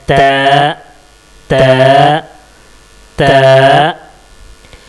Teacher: जो जुबान की नोक है उस नोक को हम ऊपर वाला जो दांत है उसकी जड़ में टच करेंगे तो सही ता निकलेगा।